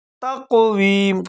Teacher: فی احسن تقویم، ہا کو گلے کے شروع سے ادا کریں گے، سین میں سیٹی کی آواز نکالیں گے۔ تقویم، قاف کو موٹا کر کے پڑھیں گے جھٹکے کے ساتھ۔